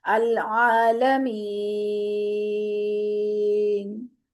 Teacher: العالمین، جب نون کی زبر پڑی ہم نے تو اس کو 2 حرکت ہی کھینچا. جب ہم نے وقف کیا نون پہ، ساکن کر دیا نون کو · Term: مد عارض وقفی